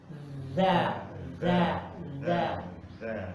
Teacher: Lidah digesek dengan gigi seri atas.